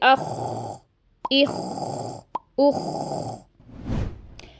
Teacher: दूसरी गलती हम यह करते हैं कि इसकी अदायगी के वक्त हम हल को बिल्कुल बंद कर देते हैं और इसमें पैदा होने वाली खराश की आवाज को हम बहुत ज्यादा एजरेट कर देते हैं और आपको ऐसी आवाज आती है जैसे कोई खराटे ले रहा